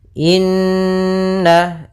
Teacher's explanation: ada bacaan ghunah yaitu kita panjangkan dua harakat surah n-nya karena di sini ghunah ya ada nun bertasydid ditandai